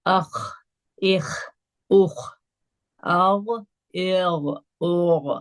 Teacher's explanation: top of the throat سے خا اور غائن ادا ہوتا ہے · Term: ادنا حلق